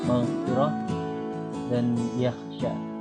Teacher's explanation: Tenggorokan bagian atas, dasar lidah bertemu dengan langit-langit berdaging. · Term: huruf ghain dan kha